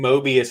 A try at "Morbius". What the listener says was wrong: You said Mobius. It sounded like you said Mobius. I could be wrong.